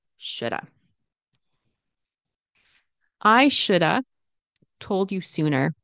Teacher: Because remember the of turns into a sound. And the L is never pronounced